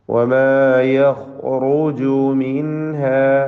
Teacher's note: വമാ യഖ് എന്ന് പറയുമ്പോൾ ഖായിന് തഫ്ഖീം വരുന്നു, റായിനും തഫ്ഖീം